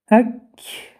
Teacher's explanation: پس این دو حرف در اول تلفظشان شدید بوده و در آخر تلفظشان همس می شوند. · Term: شدیده محموس